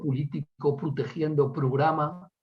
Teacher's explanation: el cierre de la O átona